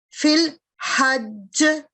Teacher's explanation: چونکہ یہ والا کلکلا جیم پہ کلکلا کریں گے لیکن تشدید کی وجہ سے یہ جو ہے اس کی آواز جیم کی وہ نمایاں ہوگی. یہاں اسٹرانگ کلکلا ہوگا فل حج کیونکہ تشدید کے ساتھ ہے یہ